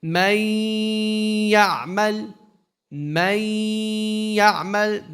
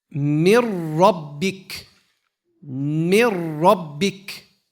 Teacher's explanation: With a ghunna, with a nasalization. Mir rabbik is an idgham without a ghunna.